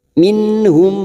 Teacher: mim sukun bertemu ro, namanya idhar Safawi, mim sukun dibaca jelas.